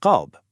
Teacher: You pronounce it deep from the back of the throat.